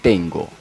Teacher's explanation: n es velar por efecto de la g